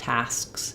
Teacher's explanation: It's got to have that little stop. So you're basically trying to say that K, but it doesn't really get burst out or released